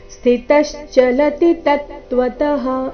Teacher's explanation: ಕೊನೆಯ ಚರಣದಲ್ಲಿ ಎಲ್ಲಾ ಅಕ್ಷರಗಳು ರಸ್ವ ಮಧ್ಯದಲ್ಲಿ ಯಾವುದೇ ಅಕ್ಷರದ ಮೇಲೆ ಜಾಸ್ತಿ ಹೊತ್ತು ನಿಂದಿರಬಾರದು ಅದನ್ನ ದೀರ್ಘ ಕೂಡ ಮಾಡಬಾರದು ಸ್ಥಿತಶ್ಚಲತಿ ತತ್ವತಃ ಈ ರೀತಿ ಕಂಟಿನ್ಯೂಸ್ ಆಗಿ ಹೇಳಬೇಕು